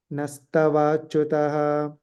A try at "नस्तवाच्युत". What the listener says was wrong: And then there's no visarga at the end, just nastavachyuta.